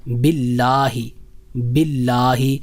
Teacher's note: باللہ میں دوسری جو بات ہے وہ ہے جب زیر کے بعد اللہ جل شانہ کا نام آئے تو پھر ہم لفظ اللہ کو باریک ادا کریں گے